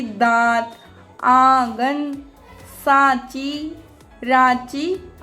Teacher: दा, देखो चंद्र बिंदु है और दा तो मुंह से नाक से निकलते हुए मुंह से बाहर की ओर हवा आ रही है, उसे बोलते हैं अनुनासिक।